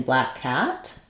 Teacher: for the a vowel the front of my tongue is down down and open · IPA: /æ/